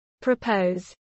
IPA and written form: pɹəˈpəʊz (propose)